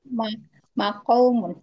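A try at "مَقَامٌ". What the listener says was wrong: Maka diganti waw jadi alif. Makamun.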